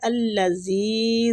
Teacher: زال کو کھینچیں گے، مد جائز منفصل ہو رہی ہے، کھینچنے کی مقدار 4 حرکات ہے